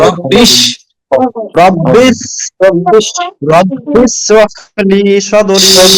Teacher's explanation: জিহ্বার আগা সামনে নিচে দুই দাঁতের আগার দিকে লাগাইয়া জিম শিন ইয়া। শিন শিন শক্ত হবে।